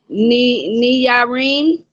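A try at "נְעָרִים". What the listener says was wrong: That's not a knee. That's a shiva underneath that. That makes a nus. That makes a nus sound like a nut. Not Irene.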